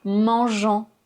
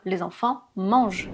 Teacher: le ent c'est juste la terminaison de la troisième personne du pluriel au présent. Donc on ne le prononce pas.